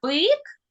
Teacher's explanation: у слові бик перший звук б він приголосний твердий ми його позначили однією рисочкою А у слові біб звук Б